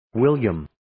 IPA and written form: 'wɪljʌm (William)